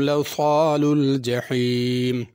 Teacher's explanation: جحیم کی ہا بڑی ہے، اس کو جہیم نہیں پڑھنا